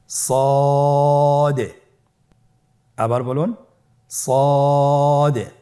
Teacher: সদ হরফটি পুর হরফ। মোটা হরফ উচ্চারণ ক্ষেত্রে মোটা করে পড়তে হবে এবং উচ্চারণ করার সময় তিন আলিফ টেনে পড়তে হবে।